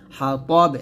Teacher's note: ওয়াকফের অবস্থায় কি হয়ে গেছে, এই যে বাটা সাকিন হয়ে গেছে, কলকলা করতে হবে